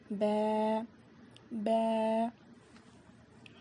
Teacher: دونوں ہونٹوں کے گیلے حصے سے ب ادا ہوتا ہے۔ اس کو با ایسے نہیں پڑھیں گے، ب ایسے پڑھیں گے۔